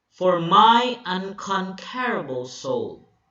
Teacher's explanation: for is unstressed. So, this is an iamb because it's followed by a stressed syllable.